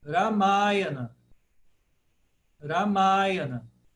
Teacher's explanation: Porque o Ma é a primeira longa, de trás para frente.